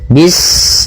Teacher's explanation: Pada bacaan bis ini sempurnakan huruf sinnya. Ketika sinnya sukun ini ada sifat saofir dia harus kita alirkan nafasnya